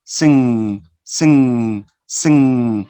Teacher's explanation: You know that a vowel is an oral sound. But when you say sing, the I sound is not oral, it's nasal. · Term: regressive assimilation